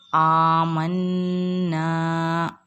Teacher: الف، یہاں الف مدہ ہوگا، الف سے پہلے زبر ہے تو الف مدہ ہوگا، اس کو ہم ایک الف کی مقدار کھینچ کر پڑھیں گے